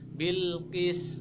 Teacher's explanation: jadi matikan dulu kemudian timbul Qalqalah